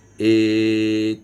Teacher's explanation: ए और ऐ ये जो वर्ण हैं वो कंठ और तालु से उच्चरित होते हैं · ए तो गले से भी आवाज आएगी, और उसके साथ साथ आपकी जीभ जो है वो तालु के साथ स्पर्श करती है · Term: कंठ तालु